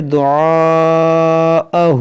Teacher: یہاں پر جو مد ہے یہ مد متصل ہے، اس کو 3 4 الف کے برابر کھینچ کر پڑھیں گے